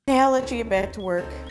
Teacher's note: The word you is reduced to ya in unstressed words.